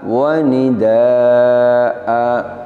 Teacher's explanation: Kita ingat kembali kaidahnya bahwa apabila kita wakaf pada satu lafadz yang huruf terakhirnya adalah fathatain, fathah tanwin, maka cara wakafnya adalah dengan mengganti fathatain dengan fathah panjang. Jadi fathatain ini ketika wakaf kita baca panjang, sama panjangnya dengan mad asli atau mad tabi'i. Wakaf yang demikian, yaitu wakaf dengan mengganti fathatain dengan fathah panjang, ini kalau dalam pembahasan mad namanya mad iwad.